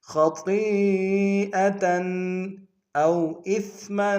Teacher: او میں واولین بغیر کھینچے پڑیں گے، حمزہ کو سا کے سامنے لائیں گے، سا کو باریک ادا کریں گے، میم کو بتنوین غنہ کریں گے۔